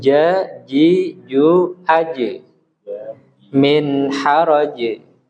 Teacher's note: ingat huruf jim jangan didesiskan atau keluar udara. Jadi harus betul-betul kita perkuat.